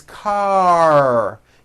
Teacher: your tongue has to pull back car and also your lips close a little bit in the front the r needs to be very strong and you need to